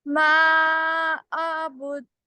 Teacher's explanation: ما 4 count stretch ہوگا · حمزہ کی آواز الگ رہے گی عین کی آواز الگ